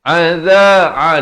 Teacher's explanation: Adza, di pertengahan kerongkong, za di hujung lidah.